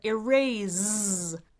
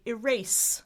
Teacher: Americans say erase with an S, like a snake rather than a Z, like a zebra.